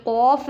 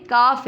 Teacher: اس قوف کو موٹا پڑھیں گے اور کاف کو باریک پڑھیں گے